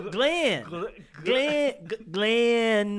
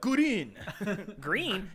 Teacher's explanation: there is no distinct variation between the L and the R phoneme